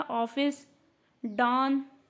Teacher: आगत स्वर क्या होता है, जिसे आपने लिखा ऑफिस, ये आ और ओ के दोनों के बीच का स्वर होता है, ठीक है। आगत स्वर का उच्चारण आ और ओ के बीच में होता है।